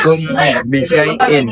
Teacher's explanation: mat lain karena ya sukun didahului dan berharkat fathah. Cara bacanya dipanjangkan 2 harakat.